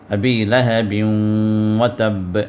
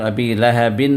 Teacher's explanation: اب جہاں پر نون کا ساؤنڈ آتا ہے، یہ نون کا ساؤنڈ مکس ہو جا رہا ہے واو کے اندر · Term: ادغام مع غنہ الناقصہ